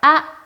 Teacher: 짧게 삼성으로 올려주시면 돼요